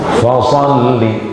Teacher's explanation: Anginnya keluar dulu, baru hurufnya keluar. Fasalli, bukan fasalli.